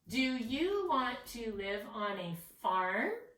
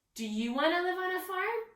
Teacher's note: if you notice the end of my sentence, my voice goes up because I'm actually asking a question.